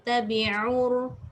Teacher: Tabi'ur, dia kena tekan dekat tengah halkum. Kalau tabi'ur dia daripada pangkal halkum, dia naik sikit. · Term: ain